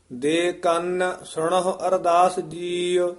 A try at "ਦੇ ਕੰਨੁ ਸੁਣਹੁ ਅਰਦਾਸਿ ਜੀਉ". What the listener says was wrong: ਹਾਂ, ਦੇ ਕੰਨ ਇੱਥੇ ਪੋਲਾ ਹੀ ਉਚਾਰਨ ਕਰਨਾ, ਕੰਨ ਨਹੀਂ ਕਹਿਣਾ। ਦੇ ਕੰਨ ਸੁਣੋ ਅਰਦਾਸ ਜੀਉ।